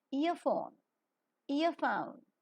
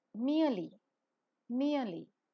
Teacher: towards the Central and rounded wall just about the open position the lips are neutral while the sound is pronounced the diphthong is falling centering and narrow or short Glide